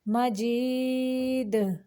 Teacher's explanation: دال کو ساکن کرتے ہوئے قلقلہ کریں گے، کیونکہ یہ قلقلہ حروف میں سے ہے